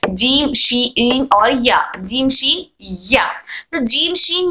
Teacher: जब हम जबान के दरमियानी हिस्से को तालू के दरमियानी हिस्से से लगाते हैं तब जीम की आवाज निकलती है। जबान का दरमियानी तालू के दरमियानी हिस्से को टच कर कर हर्फ जीम अदा होता है।